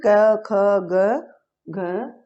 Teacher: इनका उच्चारण स्थान कहाँ से होता है, कंठ से होता है